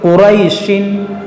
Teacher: اگر ہم یہاں وقف کریں گے تو یہاں پر کھینچیں گے قریش، اور ملا کر پڑھیں گے تو قریشن، تو پھر نہیں کھینچیں گے